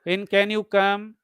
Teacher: If you say, when can you come? So, rising intonation, it indicates politeness.